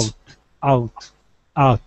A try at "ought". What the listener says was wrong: Ah. Ah. Ought. Okay, take out that oo sound. Take out the oo. You're saying ow. We want to say an ah only. The O-U-G-H only makes an ah sound.